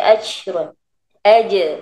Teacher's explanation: Lantunkan huruf jim. Jangan angin saja.